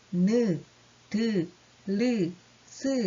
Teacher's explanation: 자, 두 번째로 주로 어디에서 또 장애를 받느냐. 윗잇몸과 혀끝이 맞닿으면서 나는 소리가 있어요. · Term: 잇몸 소리